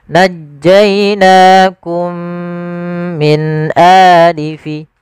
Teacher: Cara membacanya yaitu kita masukkan mim yang pertama kepada mim yang kedua, kemudian ditahan dengan gunnahnya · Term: idgham mimi